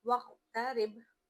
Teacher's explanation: واو قوف زبر وق، وق، تا زبر تا، وقت، را با زیر رب. را کو باریک پڑھنا ہے کیونکہ اس کے نیچے زیر ہے اور با پر جھٹکا دینا ہے